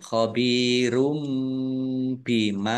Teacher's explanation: Mad thobi'i khobirum bima ba kasrah ya sukun juga mad thobi'i dibaca panjang dua harakat dumah tanwin bertemu dengan huruf bacaan iqlab ya dibaca membalik tanwinnya dibaca mim dulu